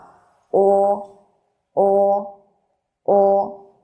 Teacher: 读这个字母名称的时候，大家注意嘴型，要区分一下跟汉语里面▁o▁的发音▁o，▁但是读这个时候呢，是嘴型要向前嘬的